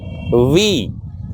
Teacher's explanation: okay so let's begin V is a Leo Dental sound and it should be produced when the upper set of teeth touches on the lower lip